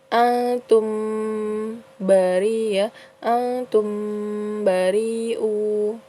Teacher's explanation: Kemudian selanjutnya pada lingkaran selanjutnya itu ada hukum tajwid ikhfa ya, ikhfa syafawi karena mim sukun bertemu dengan ba ya. Jadi dibacanya berdengung ya.